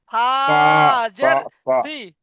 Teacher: জীবের আগাটা উপরের দাঁতের আগার সাথে হালকা করে লাগান